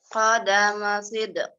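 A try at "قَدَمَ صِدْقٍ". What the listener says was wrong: Jangan disuarakan. Tinggal mantulnya aja. Qadama sidq. Iya, ada tetapi enggak kita sengaja bunyiin ya. Kalau bunyiin namanya harokat ya.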